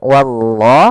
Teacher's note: pada lafal Allah di sini lam tebal